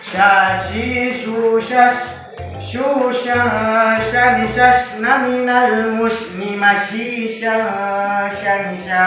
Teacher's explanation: huruf sya memiliki makhraj tengah lidah mengarah ke langit-langit atas